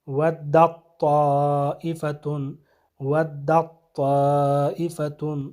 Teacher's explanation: اسی طرح حرف تا کا حرف طا میں ادغام ہونا، جیسے اس کے لیے مثال ودت طائفۃ، ودت طائفۃ، تو ودت میں جو تا ہے یہ ادغام ہو جائے گا طائفۃ کے حرف طا میں، تو یہاں پہ تا کی آواز نہیں آئی بلکہ طا کی آواز آنی چاہیے